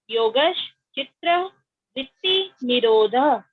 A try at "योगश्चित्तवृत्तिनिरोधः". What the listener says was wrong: चित्र नहीं, चित्ता चित्ता चित्ता।